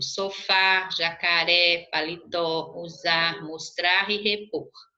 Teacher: oxítona, a última sílaba é tônica